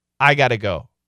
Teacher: Got to becomes gota.